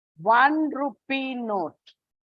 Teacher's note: vowel sound and honest o sound ah one rupee note yeah O is a vowel it's a vowel but when you pronounce it you don't have the o sound it is more of w